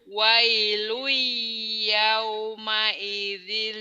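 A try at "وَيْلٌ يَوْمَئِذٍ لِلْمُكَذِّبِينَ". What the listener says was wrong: dealnya yuk teteh cepet-cepet kan ada tasdid nih teh nih. Wailui wailui yauma idil lil yauma idil lil mukadzibin nih teh.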